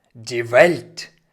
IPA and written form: diː vɛlt (die Welt)